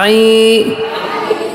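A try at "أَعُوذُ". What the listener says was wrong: অনেকে আই বলে আই হবে না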